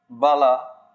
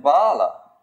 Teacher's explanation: short and long ah are two different phonemes